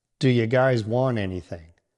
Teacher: Do you becomes a quick do-ya sound.